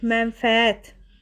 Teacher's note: ən-in biri düşür, digəri də uzun tələffüz olunur · Vurğu üçüncü hecaya düşür.